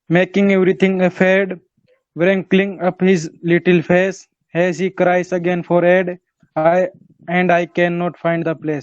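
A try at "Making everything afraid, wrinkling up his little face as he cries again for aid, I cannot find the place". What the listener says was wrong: शाबाश, बहुत अच्छा।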